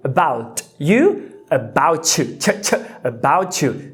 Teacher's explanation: Você viu que eu palatalizei de t, eu mudei para ch.